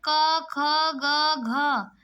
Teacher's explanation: क ख ग घ यह सब कहां से बोला जा रहा कंठ से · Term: कंठ ध्वनियां